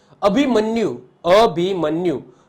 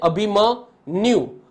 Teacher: શબ્દ છે જોઈન્ટ શબ્દ છે એટલે કે જોડાક્ષર છે એટલા માટે મ્યુ નો થડકો મ ઉપર લાગશે એટલે કે મ છે જે લઘુ છે એ ગુરુ થઈ જશે